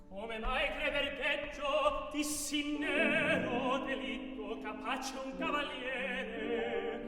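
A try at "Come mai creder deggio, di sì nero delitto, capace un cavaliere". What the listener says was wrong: Okay, so that sagged at the end. Okay, and we want the whole thing to be a statement about one thing.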